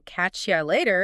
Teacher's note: catch you later, which often gets reduced even further in speech to catch ya later